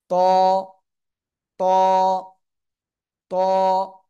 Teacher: উপরে দুই দাঁতের আগার সাথে লাগাবেন মোটা আওয়াজে উচ্চারণ করতে হবে